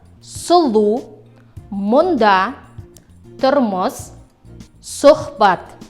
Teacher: Твердый, губной, произносится кратко и приобретает звучание между О и У. При произнесении данного звука губы вытягиваются вперед и слегка округляются, язык отодвигается назад. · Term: гласный звук О